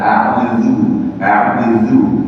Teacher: dia di ujung lidah, ujung lidah ya menyentuh ujung gigi seri atas. Jadi lidah supaya menyentuh lidah itu bukan ini ya, bukan dia dimasuk ke dalam sedikit sehingga supaya tersentuh ujung lidah ini dengan ujung gigi di atas dikeluarkan dia dari saraknya supaya dia tergigit. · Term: zal